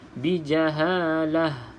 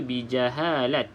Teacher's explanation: Kalau berhenti pada perkataan yang hujungnya adalah ta marbutah ataupun ta bulat ini maka bunyinya seperti Huruf Ha